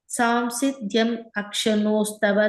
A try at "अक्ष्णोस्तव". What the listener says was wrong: The first line la akshnos, iksh is only half iksh, not full ksha. So akshnos tava.